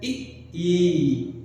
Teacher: जीभ आगे की तरफ जा रहा है, अग्र स्वर आगे की तरफ दबाव बना रहा है।